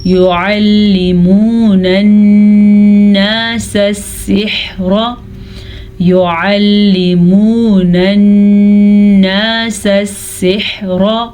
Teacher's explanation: نون کا غنہ ادا کرنا ہے کیونکہ نون پہ شد ہے تو غنے کی ادائیگی لازمی ہے